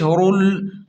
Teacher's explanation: را کو موٹا پڑھیں اور را کو لام کے ساتھ سختی سے ملائیں کیونکہ لام پر تشدید ہے